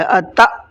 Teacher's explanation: حمزہ ساکنہ کے پڑھنے میں جھٹکا ہوتا ہے، اس لیے میں نے اس کو تا کو جھٹکے کے ساتھ میں پڑھا ہے، اتا۔